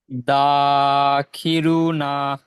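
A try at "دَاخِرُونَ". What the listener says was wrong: রুতে একটু টান হবে দাখিরুনা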